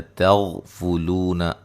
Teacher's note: موٹا ادا کریں گے، وہ مدہ ہے، لو واو لین ہے، تغفلون غین کو موٹا ادا کریں گے، تا کو باریک